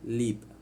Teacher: the air escapes around the side of the tongue